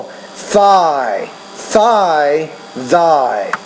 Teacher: you got to get the tongue between your teeth. We call this in English interdental consonant